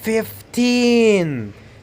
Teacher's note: You have to stretch teen. Put the stress on teen.